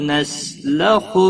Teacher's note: نسین ساکن کو ہلانا نہیں، لخو خو حروف مستعلیہ میں سے ہے، پر پڑھا جائے گا۔ منہ نون ساکن کے بعد حروف حلقی کا ہا آیا ہے، اظہار حلقی ہوگا، گنہ نہیں کریں گے۔